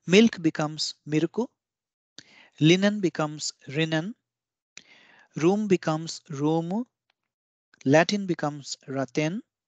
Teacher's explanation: Since there is no L or L sound in Japanese, both L and R sounds in foreign words are replaced with the relevant sound from the RA, RI, RU, RE, RO line in Katakana. So this means milk becomes miruku, linen becomes rinen, room becomes roomu, Latin becomes raten, Lincoln becomes Rinkan, and restaurant becomes Resutora. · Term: treatment of L and R sounds